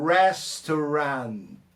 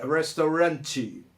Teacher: A sílaba tônica está no res. E o T, a gente mata na hora da pronúncia, né?